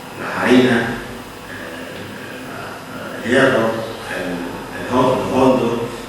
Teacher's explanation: cosas que en castellano tiene una H, no se pronuncia, pero en andaluz la pronunciamos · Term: H aspirada